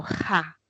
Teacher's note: El postdorso de la lengua se acerca al velo y ahí se va a producir el sonido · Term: Velares